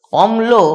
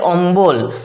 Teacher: এইযে ম আর ল যুক্ত ব্যঞ্জনের মাঝখানে একটা ব চলে এসেছে। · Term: মধ্য ব্যঞ্জনাগম